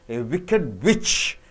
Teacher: So you're not stressing on wicked, you're stressing on witch.